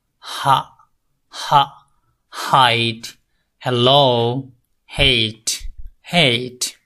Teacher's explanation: glottal sound, ha. Air passes from the windpipe through the vocal cord. আপনার vocal cord দিয়ে বাতাস বের হবে smoothly, কোনো প্রেসার করবে না।